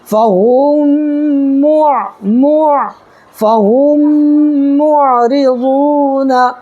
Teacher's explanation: میم ساکن کے بعد میم آئے تو میم کو میم سے ملا کر گنہ کے ساتھ پڑھا جائے گا